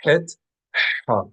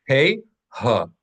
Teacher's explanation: het is like an H sound produced in the same place, in the same way, but the only difference is it's slightly constrained